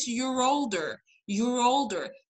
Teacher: ام اه هنا في your و older، ما قلتش your older brother. لو خدتوا بالكم هنا هي عملت linking لل your، شبكتها على طول مع older، قالت your older your older as if انه دي كلمة واحدة.